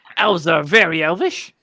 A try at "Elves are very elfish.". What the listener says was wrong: Elfish. No. It's elfish. No. You said elvish. Elfish, as in selfish.